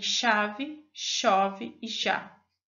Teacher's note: faz um modo de articulação fica ativo é aquele em que os articuladores se aproximam de modo a estreitar o trato vocal